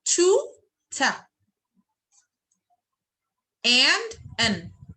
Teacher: To becomes ta, and becomes n. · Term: weak form